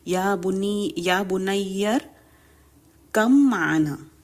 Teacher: اب اس میں با کی آواز بالکل نہیں آئے گی، میم کی آواز آئے گی، یا بنیر کم معنا۔ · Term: با کا میم میں ادغام